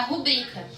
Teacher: Mas não é, porque não tem acentuação ali, a sílaba tônica não é o ru, é o bri